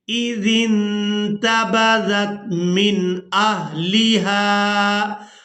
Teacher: وَاذْكُرْ فِي الْكِتَابِ مریم اِذِ انتبذت یہاں زال کو نرمی کے ساتھ ادا کرتے ہوئے نون ساکن کے ساتھ ملائیں گے اور نون ساکن پر اخفا کریں گے، یعنی نون کی آواز کو ناک میں چھپا کر ادا کریں گے۔